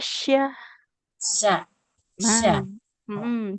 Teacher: sya tengah lidah menempel ke langit-langit atas